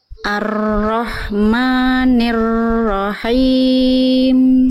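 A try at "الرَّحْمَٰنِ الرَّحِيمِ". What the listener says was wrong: Sip, masih agak masuk ke hidung, nggak apa-apa.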